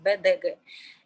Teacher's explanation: En realidad se pronuncian parecido a las sordas P, T, K del español.